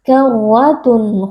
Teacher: memperjelas bunyi tanwin karwatun kha tanpa disertai dengan gunnah yang panjang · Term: izhar halqi